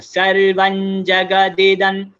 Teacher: सो अम की मात्रा जो है वो न्या में जाएगा